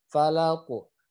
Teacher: Ya, yang harus diperhatikan adalah qaf, qaf yang sukun karena waqaf, gitu kan? Karena berhenti dia harus dipantulkan dan pantulannya itu seperti huruf fathahnya. Ya, huruf fathahnya kan ko, maka mantulnya juga harus ke ko.